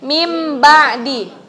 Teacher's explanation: berarti cara bacanya mim ba'di menjadi huruf mim dan mim nya itu ghunnah selama dua ketukan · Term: iqlab